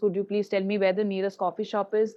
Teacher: Listen to the slide stress on coffee shop and the rising intonation at the end